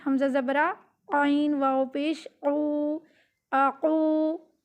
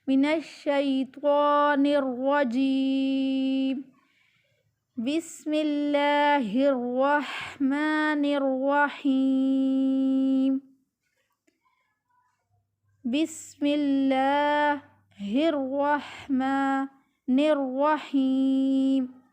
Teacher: تو آپ جو کھڑا زبر ہے اس کو بہت لمبا نہیں کرنا، ایک الف کی مقدار جتنا آپ نے لمبا کرنا ہے۔ ایک الف کی مقدار جو ہے قاری حضرات نے اس کی بتائی ہے کہ درمیانی مسافت سے ایک انگلی جو بند ہے اس کو درمیانی مسافت سے کھولیں، اتنی سی مقدار میں لمبا کرنا ہے۔